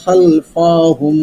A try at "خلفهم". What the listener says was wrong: খলফাহুম, খলফাহুম টান দেওয়া যাবে না।